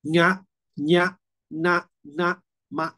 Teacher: ถ้าจะออกแบบถูกต้องเนี่ยลมจะต้องออกมาที่โพรงจมูกไม่ได้ออกที่ปากนะครับ · ลมที่จะออกจะไม่ออกปากนะครับลมจะออกออกจมูก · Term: นาสิกาฐาน